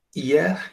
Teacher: le ye est plus rapide que le I. Alors, il ressemble aux consonnes par rapport à la syllabation.